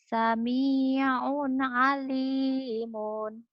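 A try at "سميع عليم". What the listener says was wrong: Pendek ujungnya. Sami'un. Alimun. Jangan alimun. Jangan panjang.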